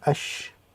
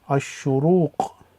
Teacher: Normally that would be al, but we have a sun sheen here, which is a sun letter. The lam becomes silent, so it'll be ash. And then the sheen with the dhamma, ashu, the ra with the dhamma, ashuru, and the wow, ashuruq, which is sunrise.